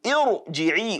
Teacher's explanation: we have to apply a tafkhim, full mouth pronunciation of that ra. Do not forget, a fundamental attribute of ra is at-takrir, that flapping, that rolling.